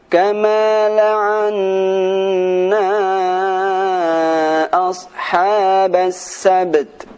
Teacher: Nah, di sini ada huruf ba mati dan huruf ta mati. Maka sifat qalqalah pada huruf ba dan sifat hamas pada huruf ta, dua-duanya harus dibaca dengan sempurna.